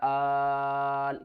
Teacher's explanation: حمزہ لام کھڑا مد زبر آل کھینچ کر پڑھنا ہے. 3 سے 5 الف کی مقدار